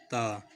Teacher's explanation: تا کو زبان کی نوک کو اوپر والے دانتوں کی جڑ سے ملا کے ادا کرتے ہیں